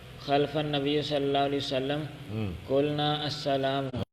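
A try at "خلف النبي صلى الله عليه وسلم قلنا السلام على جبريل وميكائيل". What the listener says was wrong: اب چھوڑ رہے ہیں لفظ،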